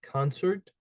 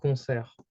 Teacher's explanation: specific so you would say coner okay so here you can you cannot hear the T it's basically silent or you can call it mute